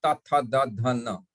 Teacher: See द tip of द tongue touches द teeth inside. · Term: दंत्य वर्ण